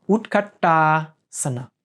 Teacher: it's a retroflex T that the tongue goes to the roof of the mouth